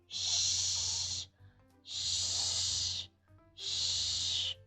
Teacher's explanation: when you say the SH sound, your lips are rounded. Your tongue isn't going to touch anywhere in particular in your mouth. It's kind of just floating.